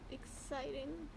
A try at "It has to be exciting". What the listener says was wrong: That's not exciting. You should say that excitedly, though.